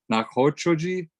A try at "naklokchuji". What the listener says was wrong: Knock, it's got a, after I say knock, it's got a L sound. Knock luktuji.